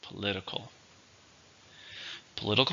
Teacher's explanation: with a stress in the second syllable